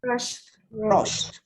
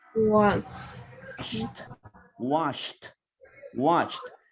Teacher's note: Estos son los verbos donde el sonido ed va a sonar a t.